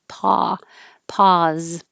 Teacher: sound exactly the same with an ah and a z. · You have to round your lips more for the O.